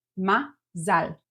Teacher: Mazel is stressing the first syllable. You shift the syllable stressing to the end and we have two A sounds.